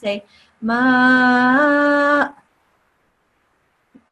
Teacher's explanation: you hear this slight, very gentle and delicate sound of a hamza, but it doesn't have any harkat